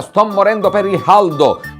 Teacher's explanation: con la c aspirata con la c non pronunciata